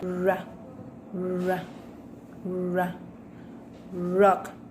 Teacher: With manner of articulation, approximant, and place of articulation, alveolar.